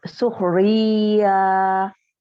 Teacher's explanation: Diulang. Ya, jadi iya-nya panjang 2 harokat. Suhriyah. Ri-nya tipis.